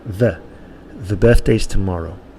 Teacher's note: A lot of Spanish speakers of English will say da instead of the, or de